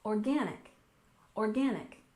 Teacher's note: And next we have organic. We stress the second syllable, organic, organic.